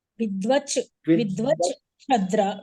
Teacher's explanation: మీరు షకారం పలకాలి, సకారం కాదు